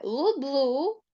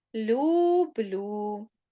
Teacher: то ми читаємо як звук у але при цьому Ми пом'якшуємо приголосний тому у нас не лублу а люблю будь ласка ваше завдання